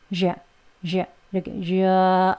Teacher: 턱이 약간 아래로 내려가져서 입이 벌어져요. 그래서 으 하는 소리보다는 아 소리에 가까운 발음으로 발음이 되는 거예요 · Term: 슈아 발음